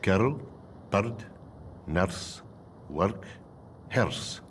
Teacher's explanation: A special dialect feature that arose in the schools of the goldfields and military towns was the so-called rolling R